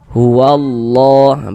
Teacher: Maka lafaz Allah huruf lam jalalahnya dibaca tabkhim, dibaca tebal. Nah, sekarang kita baca huwallah, bukan huwallah tapi huwallah, seperti itu ya.